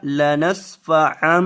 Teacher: یہاں میم کی آواز آئے گی اور گناہ ہوگا